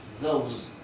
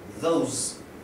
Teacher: Fíjense que coloco una Z al final porque se pronuncia zumbado. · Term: Z zumbada